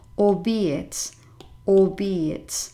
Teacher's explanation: And it is pronounced albeit, albeit. The stress falls on the middle syllable, and you pronounce it, if it's going to help you to remember it, as if you had these three words, albeit, albeit.